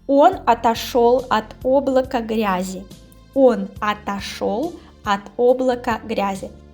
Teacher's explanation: You see here only o, but we say with a, yes, because it is unstressed. Он is stressed, we have o.